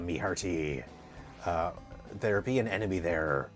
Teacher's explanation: the Cornwall has a rhotic R, and it has a hard R there.